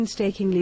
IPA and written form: penstekɪŋlɪ (Painstakingly)